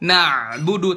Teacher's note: huruf dan sifat-sifat huruf contoh berlebih-lebihan pada makhraj huruf iyaka nabudu makhraj ainnya benar tuh di situ Di tengah tenggorokan